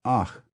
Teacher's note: the throat-clearing sound of the ch in the Scottish loch or the German ach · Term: Old English sound ch